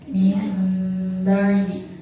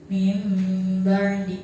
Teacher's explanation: Di situ ada nun mati bertemu dengan huruf ba, maka cara bacanya nun mati tersebut diganti menjadi huruf mim. Lama bacanya satu alif atau dua harakat.